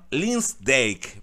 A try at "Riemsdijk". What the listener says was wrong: É, o último é Rinsdijk, com R, né? Rinsdijk. Rinsdijk. Não, Rinsdijk. Rinsdijk. Não, não. Não, é R mesmo.